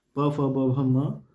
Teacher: दोनों ओष्ठों को स्पर्श से बोले जाने वाले वर्ण ओष्ठ वर्ण कहलाते हैं।